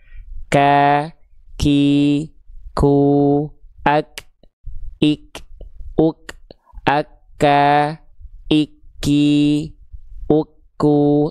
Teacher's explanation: dia nempel di antara langit-langit lunak dan keras di sini tuh. Nah, kalau dia dilafalkan di sini maka dia jadi huruf kaf. Huruf kaf itu keluar percikan nafas.